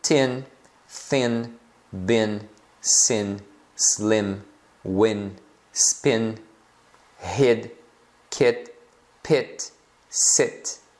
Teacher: o I vai ter o som de E. É um E, como se fosse parecido com um E fechado do português. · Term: som curto